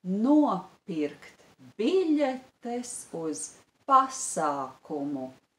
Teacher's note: The stress is on the syllable no and on the syllable bi. And on the syllable pa